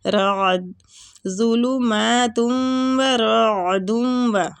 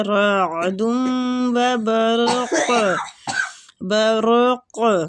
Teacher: عین جو ہے یہ ساکن ہے تو اس کی آواز کو حلق میں لے کے جانا ہے آپ لوگوں نے